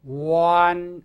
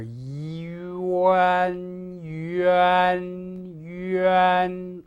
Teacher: You must not drop the I, this sound that we represent by the letter I, before the A begins.